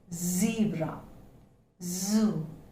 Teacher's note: instead of a hissing sound, we are producing a buzzing sound, since it is a voice consonant. Sound as in zebra, zoo, etc.